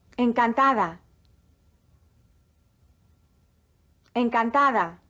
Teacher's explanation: The D, when in between vowels, is pronounced like the TH in the English word the.